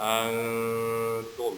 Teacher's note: kita baca dengung, samar-samar, dan diarahkan ke huruf ta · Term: ikhfa